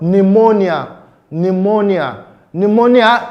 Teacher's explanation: Pneumonia is spelled with a P, but the sound P is silent.